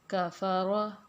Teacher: را کے اوپر زبر ہے تو را کو ہم پر کر کے پڑھیں گے